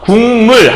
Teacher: 그러면 미음과 같은 위치에 있는 부분이 요 기역과 같은 라인에 여기 요 부분이 있잖아요. 그래서 기역이 이음으로 바뀌면 같은 위치에서 소리가 두 번 나는 거예요. 우리가 발음을 여기서 한 번, 여기서 한 번 하는 것보단 같은 위치에서 두 번 하는 게 훨씬 더 편하거든요.